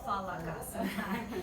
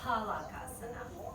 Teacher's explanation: PH is never F. PH is always P. Everything with an H is aspirated, P.